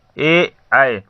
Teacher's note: ई, ए, ऐ अगर हम पढ़ते हैं तो इसमें हमारा जीभ आगे की तरफ जाता है, इसीलिए इसे अग्रस्वर कहते हैं।